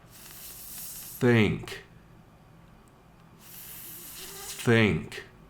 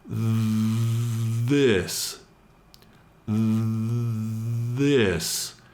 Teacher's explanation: The first word in every pair is unvoiced. The second word in every pair is the voiced sound.